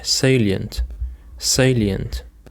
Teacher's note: The stress is on the first syllable, salient.